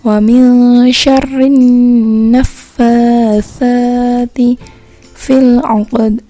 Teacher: Coba perhatikan ya, huruf sa. Sa itu dibacanya di ujung lidah, dirapatkan dengan gigi atas.